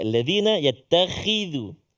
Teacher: Takut pula kalau berubah pula makna dia kan. Jadi zal, ujung lidah kita keluar sikit.